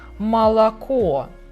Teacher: So sometimes you can find it like O, and sometimes even like A in some words like молоко